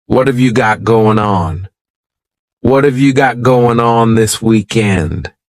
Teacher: that final g in the word going is going to be cut off and we'll just say going let's try to say that all